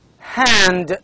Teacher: We have only one sound here. It is the only sound, one voiceless sound, glottal sound.